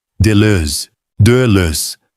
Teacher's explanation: com aquela vogal que não temos, algo entre E e O, com os lábios arredondados.